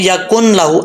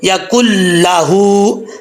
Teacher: اب کاف کے آگے نون ہے، کاف کو لام کے ساتھ جو ہے وہ ملا کے پڑھنا ہے، ٹھیک ہے. بیچ میں جو نون ہے اس کو ختم کر دیں گے، کاف پیش لام کل، نون گر جائے گا. اکثر لوگ پڑھتے ہیں یا کن لاہو، ایسا نہیں پڑھنا، یا کل لاہو.